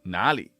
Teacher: Where in Chinese is actually 哪里 with a second tone.